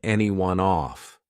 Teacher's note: Now notice how I can combine anyone off. Off starts with a vowel, and anyone it ends on an N sound. So I can take that N and just add it in front of the vowel. Anyone noff anyone off, and it sounds more like one sound, to lay someone off.